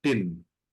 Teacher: they're pronounced using the tip of the tongue touching the hard palate. So पहले तो it was raised towards the hard palate, barely touching it. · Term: cerebrals